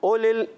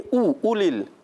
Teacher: ओलिल, ओलिल नहीं, उ उलिल, हमजा को क्लियर करना है और उसकी पेश जो है मारूफ पढ़नी है, मजहूल नहीं